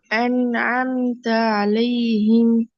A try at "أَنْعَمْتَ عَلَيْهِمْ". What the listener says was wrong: அலிஃபை மாத்த வேணாம். அலிஃப் மாறுது. அலிஃப் படிச்சாச்சு. அலிஃபை கொண்டு இதுக்குள்ள கொண்டு போய் மிக்ஸ் பண்ண வேணாம். أنعم.